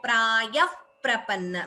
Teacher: when visarga is followed by pa, we get upadhmaniya